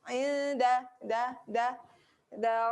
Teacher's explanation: Hujung lidah belakang gigi atas.